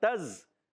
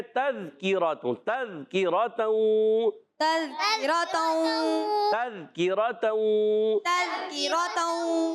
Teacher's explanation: زال کا مخرج ہے زبان کا سرا اوپر کے دانتوں کے کنارے